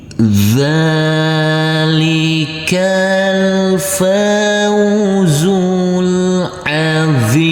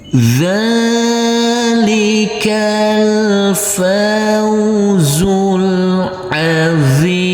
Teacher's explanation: Huruf dho boleh dibaca panjang dengan 2, 4 maupun 6 harokat.